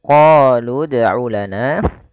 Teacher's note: kita memanjangkan huruf qo sepanjang dua harakat karena pada lafal qo ini ada bacaan Mad thi'i